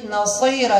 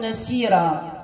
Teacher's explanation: الصاد رغم أنها في المرتبة الأخيرة من الاستعلاء، ولكن نعطيها حقها من الاستعلاء باش ما تجيش السين